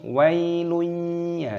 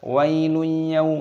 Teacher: Ada dhammah tanwin yang bertemu dengan huruf ya. Ini hukumnya dibaca idgham bi gunnah. Cara membacanya itu dimasukkan dan disertai berdengung. Wailun, ya seperti itu namanya berdengung.